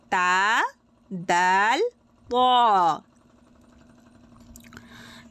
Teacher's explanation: জিহ্বার আগা সামনের ওপরের 2 দাঁতের গোড়ার সাথে লাগিয়ে উচ্চারিত হবে তা দাল ত।